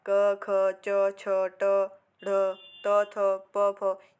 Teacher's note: हमारी जो स्वर तंत्रियाँ हैं वो एक दूसरे के निकट नहीं आती। ठीक है, ये वर्ग के पांचों वर्ग के जो पहले और दूसरे वर्ण होते हैं वह अघोष व्यंजन कहलाते हैं।